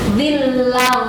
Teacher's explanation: Satu lagi, tanwin menghadapi dha atau nun mati menghadapi dha, sama harus diikhfakan, hukumnya ikhfa, dan harus ditebalkan bunyinya dan digunakan